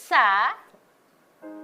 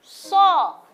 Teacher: Huruf yang dari ujung lidah tempat menempelnya adalah gigi seri paling bawah